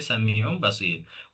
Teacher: नून साकिन या तनवीन की आवाज को मीम की आवाज में बदलकर गुना के साथ पढ़ा जाता है। जिसे तजवीद की जुबान में इकलाब कहते हैं।